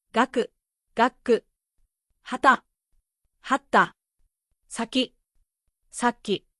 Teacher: Each time, notice the pause before the next sound. That pause is the double consonant.